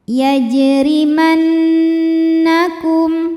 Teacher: Kemudian nunnya gunah musyaddadah karena nun bertasydid. Cara bacanya dengung. Ditahan dengungannya kurang lebih dua harakat. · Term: gunnah musyaddadah